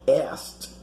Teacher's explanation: Notice how the verb to ask in the past is pronounced asked, like having a T in the end. The K is not pronounced.